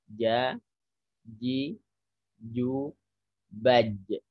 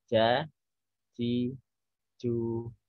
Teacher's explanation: Kita bedakan antara Jateng Anca huruf ja yang benar adalah ia tidak ada aliran nafas ya karena tengah lidah kita itu nempel ke langit-langit di atas